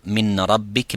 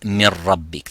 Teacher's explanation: And when it is followed only by the two letters, the Noon Sakina completely disappears, as well as its quality of the ghunna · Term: complete idgham